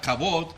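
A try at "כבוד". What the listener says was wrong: C-H-A, and you could put V or B, O-D. C-H-A, B-O-D, but it's pronounced as a V. Kavod. Kavod. Kavod.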